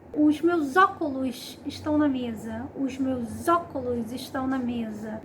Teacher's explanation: Os óculos é o mais comum, que é a elisão. Eu estou unindo o artigo com o substantivo, formando uma só palavra quando eu estou falando.